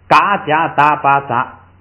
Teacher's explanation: 后音节的这个声调都变成平调